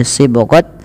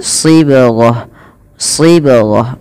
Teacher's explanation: bila kita wakaf huruf ta dimatikan dengan bunyi bacaan huruf ha